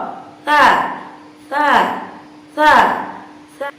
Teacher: ada nafas yang dikeluarkan sehingga menghasilkan satu suara yang samar-samar atau suara yang kurang jernih